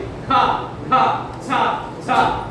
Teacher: ఖ ఖ ఛ ఛ అన్నప్పుడు లోపల నుంచి గాలి మన చేయి తాకుతుంది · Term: మహాప్రాణాక్షరాలు